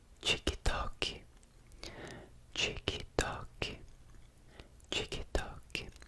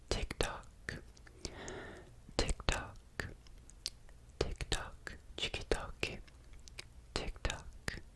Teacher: whenever a T is next to an I or even an E, I think in Brazilian Portuguese, it makes a ch sound